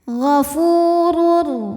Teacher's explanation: Huruf ra dibunyikan secara tafkhim karena ra berharokat dhammah tanwin, maka ra dibunyikan dengan tebal.